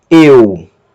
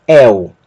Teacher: Um outro ditongo, eta, y, que vai ser pronunciado como el. Não confundir com eu, com o E fechado, mas el, com o E aberto.